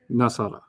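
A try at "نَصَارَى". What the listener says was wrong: No, you gotta go longer.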